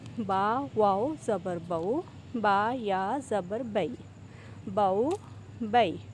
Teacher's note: हरूफ लीन को नरमी के साथ अदा किया जाता है और एक अलिफ के बराबर लंबा भी किया जाता है।